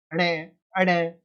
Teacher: पंचम वर्ण जो आपका होता है वो नासिकीय वर्ण होता है, यानी नाक से बोला जाता है।